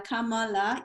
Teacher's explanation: kamala equally emphasized each syllable